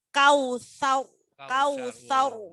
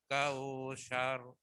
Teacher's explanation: Sarnya enggak boleh dipanjangkan sar, tapi sar langsung